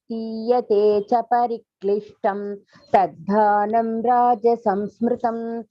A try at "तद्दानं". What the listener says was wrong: It is not taddanam, taddanam, double da. Taddanam.